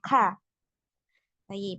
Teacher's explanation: jadi dia ditahan suaranya tapi dialirkan udaranya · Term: huruf Kaf, huruf kaf